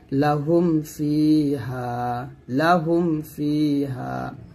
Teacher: মিম সাকিন ইজহার হচ্ছে যে বা ও মিম ব্যতীত অন্য হরফ আসলে, অর্থাৎ মিম সাকিনের পরে যদি বা ও মিম ছাড়া অন্য হরফ আসে তাহলে তাকে মিম সাকিনের ইজহার বলা হবে। আর মিম সাকিনের ইজহার তথা স্পষ্ট করে পড়তে হবে, অর্থাৎ এখানে গুণনা আদায় করা যাবে না, গুণনা আদায় না করে পড়তে হবে।